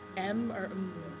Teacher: So say M or M. You're using both of your lips, whereas with most letters, you only use one. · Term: bilabial constant